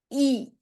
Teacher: you're gonna pull your lips back, you're gonna push your tongue against your bottom teeth, and your tongue is gonna be in the front, and your mouth is gonna be a bit closed. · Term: E sound